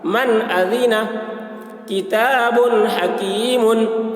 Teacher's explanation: नून साकिन के बाद हरूफ हल्की में से हमज़ा आ रहा है, इसलिए नून को ज़ाहिर करके बिला गुन्ना के जल्द पढ़ेंगे, इसको इज़हार कहते हैं।